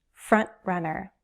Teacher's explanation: When you hold your breath, that's the same action you need to make a glottal stop in front runner.